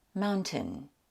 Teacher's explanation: British people generally pronounce the T, which takes away the glottal stop.